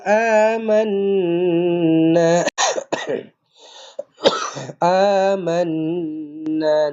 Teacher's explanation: nun sabdu dengungkan dua harakat wajibul ghunnah